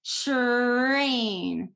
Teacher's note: So for R, because R is so difficult, some other sounds that are really good are TR or DR blends, because TR blend is actually the affricate CH. So once again, you can't round your lips when you do cha, you protrude them, train.